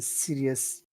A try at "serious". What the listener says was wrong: And remember, when you say that word serious, it's not serious, it's serious. You have to really extend that vowel sound if you want it to sound good. Serious. Like that.